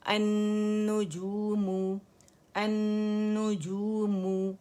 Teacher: لام اس کے اندر مرج ہو گیا تو نون مشدد ہو گیا. ٹھیک ہے گولائی سے ادا ہوگا. · میں نے لپس کو انرول کیا, گولائی ختم کی, میم کو پکڑا, پھر میں نے گولائی دی. یہ صحیح مخرج ہے, یعنی آپ لپس کی گولائی سے اسے ادا نہیں کر سکتے جب تک مخرج آپ نے اس کا نہ پکڑا ہو, ٹھیک ہے.